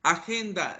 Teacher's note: Agenda, la sílaba tónica es gen.